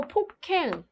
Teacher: 기역과 히읗이 만나가지고 자음 축약이 일어난 겁니다